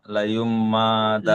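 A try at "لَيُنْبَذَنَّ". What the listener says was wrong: লায়ুম মা হয় না, ওটা বার উপরে জবর আছে। লায়ুম, আসলে এই সাকিনটা মিমের উপরে। লায়ুম বাদান ফিল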